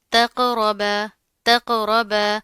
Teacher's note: قاف کے اوپر جزم آ رہی ہے، یہاں پر ہم کلکلا کریں گے